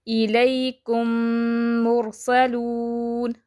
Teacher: میم ساکن کے بعد میم آئے تو دونوں کو ملا کر غنہ کے ساتھ مشدد ادا کریں گے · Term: ادغام شفوی